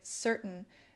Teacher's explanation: Notice how we often drop the T sound in words like certain